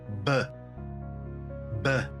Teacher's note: 알파벳 B로 넘어가서는 윗입술과 아래입술을 붙여서 B 이렇게 읽는 게 맞고요